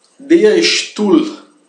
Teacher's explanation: Quando lá S se liga a um T, né? Então ST, quase sempre se converte em sh, né? O chiado aquele sh.